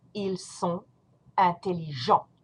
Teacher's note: You do not pronounce the T, you do not pronounce the S.